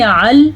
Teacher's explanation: زبان کی نوک ثنایا علیہ کی جڑ سے لگ رہی ہے تو لام ادا ہو رہا ہے